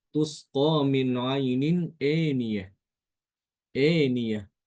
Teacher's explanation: Imam Hisyam dia membaca dengan mengimalahkan hamzah dan alif ya. Tusqo min ainin aniah.